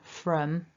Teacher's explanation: when i say the weak version from my lips are nowhere near as rounded they're much more relaxed and the tongs quite relaxed in the mouth from from so